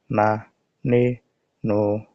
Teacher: নুনের মাখরাজ হলো জিহ্বার আগা তার বরাবর উপরে তালুর সঙ্গে লাগাইয়া একটি হরফ উচ্চারিত হয় নুন